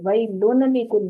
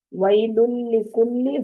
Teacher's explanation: لن کی آواز یعنی نون کی آواز جو تنوین کے ساتھ نون ہے اس کی آواز نہیں آئے گی، آگے لام کو پکڑ لیں گے۔